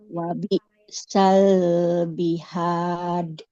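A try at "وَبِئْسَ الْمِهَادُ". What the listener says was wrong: Mihad. Jangan ada aliran nafasnya, Bu. Wabi sal mihad.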